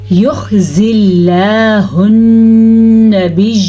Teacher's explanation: لفظ اللہ سے پہلے زیر ہے تو ہم نے لفظ اللہ کو باریکی سے پڑھا ہے، نہ کہ پر کر کے.